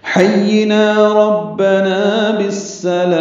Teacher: ہا وسط حلق سے ادا کریں گے، یا سے ملائیں گے ، نا الف مدہ ہے تو حرکات لمبا کریں گے، ربنا